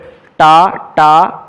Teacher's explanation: ഠ മൂർധന്യം, മൂർധാവിൽ തട്ടിയാണ്. അപ്പം നാക്കിൻ്റെ തുമ്പ് ട അല്ലെങ്കിൽ എന്നൊക്കെ പറഞ്ഞു നോക്കിയേ, ഉണ്ടോ ഒരു സോഫ്റ്റ് ഭാഗത്ത് മേളിൽ ടച്ച് ചെയ്യുന്നില്ല, അതാണ് മൂർധാവ്, അവിടെ തട്ടി വരുന്നതുകൊണ്ട് മൂർധന്യം.